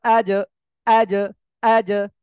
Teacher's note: জিহ্বার মাঝখান তার বরাবর উপরে তালুর সঙ্গে লাগিয়ে উচ্চারণ হবে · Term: জিম